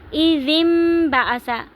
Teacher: یعنی کہ اقلاب کا مطلب ہوتا ہے بدلنا. نون ساکن کی آواز کو میم میں بدل دیں گے